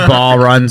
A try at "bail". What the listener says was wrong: It's bail. Don't call it ball ever again. There's not even O in it.